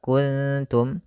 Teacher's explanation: ada nun mati bertemu kaf samarkan ke kaf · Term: ikhfa